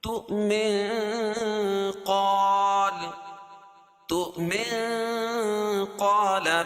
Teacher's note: اگر تؤمن کو قال کے ساتھ ملا کے پڑھیں گے تو اخفاء حقیقی ہو جائے گا